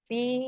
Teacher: اب فا پہ یا مدہ ہے تو 2 کاؤنٹس پڑھیں گے